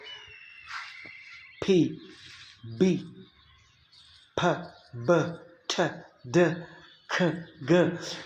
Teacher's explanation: If you try to say the word p, b, p, b, t, d, k, g, so you will feel that there is the kind of stop. Air stream is briefly stopped and suddenly released. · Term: stops